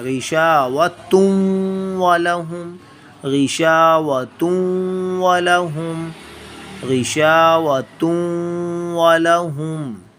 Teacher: اس طرح تو ہم اگر تن پڑھیں تو ہم نے نون کی آواز کو پراپر ظاہر کر دیا، لیکن یہاں پہ ظاہر نہیں کیا جائے گا. تنوین کی آواز کو ہم ناک میں چھپا کر ادا کریں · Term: اخفاء